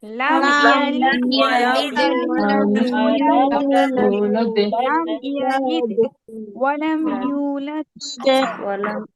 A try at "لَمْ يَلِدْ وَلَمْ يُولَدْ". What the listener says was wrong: কলকলার উচ্চারণটা কি হবে এখানে জেরের কাছাকাছি হবে কিন্তু তাসদীদের মতো আবার শক্ত হবে না লাম ইয়ালিদ এরকম শক্ত হবে না নরম করে উচ্চারণ হবে লাম ইয়ালিদ লিদ লিদ এরকম শক্ত হবে না শুনি মনোযোগ দিয়ে শুনি লাম ইয়ালিদ ওয়া লাম ইউলাদ উচ্চারণ কেমন হবে না কি বলছি লাম ইয়ালিদ ওয়া লাম ইউলাদ এরকম তাসদীদের মতো শক্ত হবে না লাম ইয়ালিদ ওয়া লাম ইউলাদ